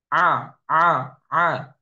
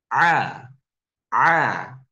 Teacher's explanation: bahwasanya huruf ain tidak dari hidung. Karena kebanyakan Indonesia ketika baca a, a, a, padahal seharusnya a, a, tidak ada bagian dari hidung.